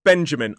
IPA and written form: ˈbendʒəmɪn (Benjamin)